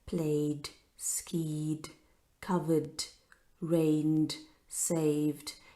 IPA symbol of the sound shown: d